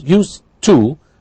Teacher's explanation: what's called blending or elision, because we have a d and a t. What you hear is used to, but of course we know the construction is used plus to.